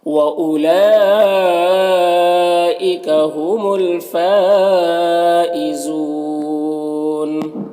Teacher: اور فا میں جو مد ہے مد متصل ہے، اسے 3 سے 4 الف کے برابر کھینچ کر پڑھیں گے۔ زو میں واو مدہ ہے اور یہاں پر وقف کی صورت میں نون کا زبر سکون سے بدل جائے گا تو مد عارض وقفی ہوگا · لام میں جو مد ہے مد متصل ہے، اسے 3 سے 4 الف کے برابر کھینچ کر پڑھیں گے۔